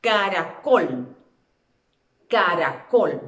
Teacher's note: Y esto la convierte en una palabra aguda, porque la fuerza de la voz es como que aquí imaginariamente yo colocara un acento. Caracol lleva acento en la última sílaba, por eso se convierte en una palabra aguda, pero no va marcado gráficamente.